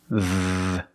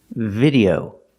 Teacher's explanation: To make this sound correctly, put your bottom lip touching your teeth. V, and make a vibration. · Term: V sound